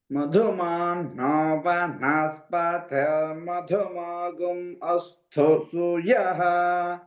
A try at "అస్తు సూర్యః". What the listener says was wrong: అస్థు ఒత్తు లేదండి, అస్తు సూర్యః